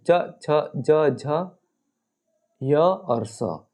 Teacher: यह व्यंजन जो है यह तालू से बोले जाते हैं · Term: तालव्य